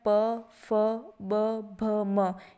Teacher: ये ओष्ठ्य ध्वनियाँ हैं, यानी कि बोलते वक्त दोनों ओष्ठों का मिलाप होता है।